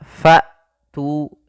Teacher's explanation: Jahar tertahannya nafas. Maka ketika melafalkan hamzah fa tu, ya, nafas tertahan dan suara pun tertahan. Kemudian pelafal tu di sini ada mad tabi'i yaitu ditandai dengan dhammah bertemu dengan huruf waw, panjangnya dua harakat.